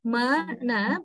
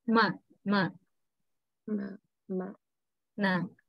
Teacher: the airstream passes through the nasal cavity, right? And goes out of the body through the nose. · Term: nasals